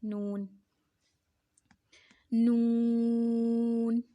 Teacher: ज़ुबान का किनारा और अनायाब से सनाया तक के दांतों की जड़ों से अदा होता है। अनायाब और सनाया, सनाया के साथ जो 2 ऊपर और 2 नीचे वाले 2 दांत होते हैं उन्हें सनाया बोलते हैं।